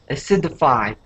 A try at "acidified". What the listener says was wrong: Okay, give me that D at the end.